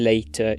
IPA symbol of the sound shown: tɕ